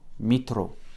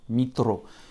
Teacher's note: L'accent tonique de mitro tombe vraiment sur le O.